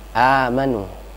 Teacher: ada a yang panjangnya 2 harokat, ini disebut di dalam hukum tajwid disebut dengan mad badal